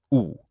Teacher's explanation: U is a high, back, rounded vowel. So unlike E, it is rounded.